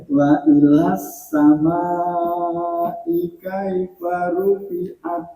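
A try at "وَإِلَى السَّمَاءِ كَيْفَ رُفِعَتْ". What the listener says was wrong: Nggih, sampun lancar cuma ma-nya dipanjangkan lagi. Wa ilas sama kaifa rufi'at.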